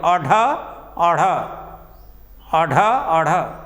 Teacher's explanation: उत माने उठना, क्षिप्त माने गिरना। जब हमारी जिह्वा की नोक बेटा मूर्धा को स्पर्श करके झटके से नीचे गिर जाती है तो उच्छिप्त व्यंजन अढ़ अढ़ अढ़ अढ़ का उच्चारण होता है।